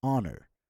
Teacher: we pronounce in the word as if there is no H at all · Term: H is silent